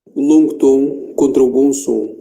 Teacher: Depois temos o on, em palavras tipo com, bom, bom dia, é bom, com o fechado nasal.